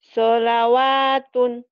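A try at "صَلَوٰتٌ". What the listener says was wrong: Kalau ada barisnya, iya. Ini enggak ada barisnya. Maunya enggak dianggap. Enggak dibaca maksudnya. Solatun.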